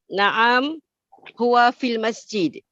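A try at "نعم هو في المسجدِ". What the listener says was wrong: Naam huwa fil masjidi. Harokat akhirnya tolong Ibu baca.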